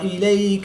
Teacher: یا ساکن سے پہلے حرف پر زبر ہے تو یہاں پر یا لین ہوگا، اس کو لمبا نہیں کریں گے۔